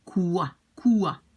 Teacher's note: it's not exactly like a W. It's more like an U.